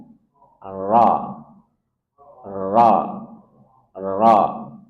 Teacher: Jadi latih huruf ro yang dia takrirnya atau getarannya cuma sekali.